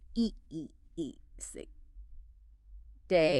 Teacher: You're sliding from one vowel sound smoothly into another within the same syllable. Your mouth shape actually changes while you're making the sound. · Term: diphthongs